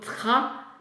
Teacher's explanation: Parce que R se prononce au fond de gorge et le T se prononce devant. Et donc, le R attire le T en arrière et ça devient K.